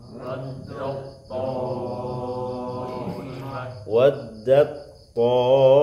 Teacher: Sifatnya yang beda. Ta sifatnya hams, to sifatnya isti'la. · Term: idgham mutajanisain